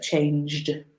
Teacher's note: So we don't pronounce the E. Change, 1 syllable. Changed, 1 syllable. Not changed, but changed.